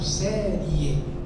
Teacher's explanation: Em série, quando eu falo, o E no ditongo, ele é mais forte. Então aqui é semivogal e aqui é vogal. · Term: ditongo crescente